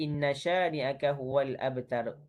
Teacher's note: wajibul gunnah. Wajib untuk dengung. Dengan kadar harakatain.